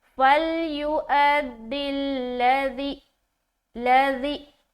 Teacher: अब ऊपर वाला हर्फ क्या है, हमजा, और उसके ऊपर क्या है, सुकून है, तो हमजा साकिन बन गया ना, تو اب جب حمزہ ساکن بن گیا تو یہاں پر حمزہ ساکینہ کا کیا کرنا ہے؟ جھٹکا دینا ہے. تو یہاں پر ہم جھٹکا دیتے ہوئے پڑھیں گے.